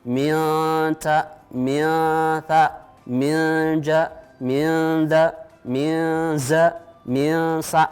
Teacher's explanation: bunyi nun dibaca dengan samar-samar seakan-akan menyatu dengan huruf yang ditemui berikutnya. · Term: ikhfa